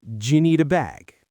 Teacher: The do you becomes j